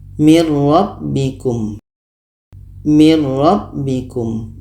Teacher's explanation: Ini contoh untuk nun matinya bertemu ro, idgham bila gunnah. Bunyi nun masuk ke ro.